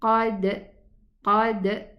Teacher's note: And the dal has qalqala